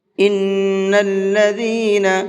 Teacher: یہاں نون کے اندر غنہ کریں گے اس لیے کہ نون کے اوپر تشدید ہے